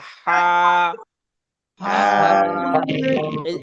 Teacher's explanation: এই হাটা উচ্চারণ হবে একদম গলার মধ্যখান থেকে